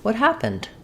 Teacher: My pattern might be kind of mid-pitch up and then down.